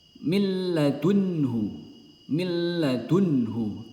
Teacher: Jadi huruf nun tidak terbaca melainkan melebur langsung ke huruf lam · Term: idgham bila ghunah